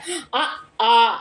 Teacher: அ ஆ என்ற இரண்டு உயிர்களும் வாய் அங்காத்த நிலையில் மிதற்று வழியால் பிறக்கின்றன வாய் அங்காந்த நிலையாலும் நா பின் முன்னும் பின்னும் தாழ்ந்து நடுவில் உயர்ந்த நிலையாலும் இதழ் குவியாது பறந்த நிலையாலும் பிறக்கும் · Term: மிடற்று உயிர்